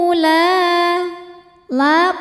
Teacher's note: adalah Mad thi'i ziri sebab ada Alif yang didahului harakat fathah maka huruf lamnya panjangkan dua harakat saja dan ini panjangnya harus sama ya harus konsisten diayun kalau mau